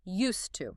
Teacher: you have a D sound followed immediately by a T sound